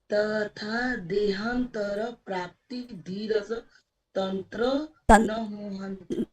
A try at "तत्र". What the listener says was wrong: तत्र है, तत्र मंत्र, तत्र आपने तंत्र बोल दिया, तत्र है।